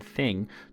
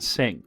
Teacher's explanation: the linguistic shift of changing the thorn sound, represented as the TH sound, the th as in thing, to an S sound as in sing